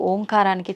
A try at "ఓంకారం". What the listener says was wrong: అది ఓంకారం కాదు, ఔంకారం. మనం పలకడమే దాన్ని తప్పు పలుకుతున్నాం. మనం మాట్లాడుతున్న ప్రతి మాటల్లో ఎక్కడో ఒక చోట అకారము, ఉకారము, మకారము ఉంటాయి. అకార ఉకార మకార అర్ధమాత్ర ఇది ఓంకార. అర్ధమాత్ర మకారం అన్నాడు. ప్లస్ ఆ. అర్ధమాత్ర అంటే ఔం అని ఉచ్చరించినప్పుడు అకారము ఉకారము రెండూ పలకబడి ఓంకారం దీర్ఘమవుతుంది.